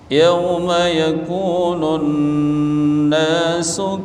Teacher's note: Nun tasydid, mim tasydid, ini tajibul ghunnah, wajib dibaca dengung. Yauma yakunun, tahan nunnya.